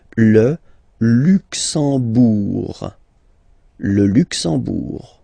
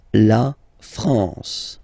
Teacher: You don't pronounce the M at all, it's this nasal en